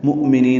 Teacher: للمؤمنین لام ساکن پہ اظہار ہے، مؤمنین حمزہ ساکن جھٹکے سے ادا ہوگا، نی یا مد ہے، دو حرکات لمبا کریں گے۔